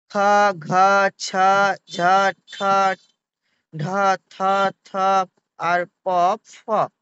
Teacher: প্রতিটি বর্গের দ্বিতীয় ও চতুর্থ বর্ণের উচ্চারণে নিঃশ্বাসযুক্ত হয় বলে এই বর্ণগুলিকে মহাপ্রাণ বর্ণ বলে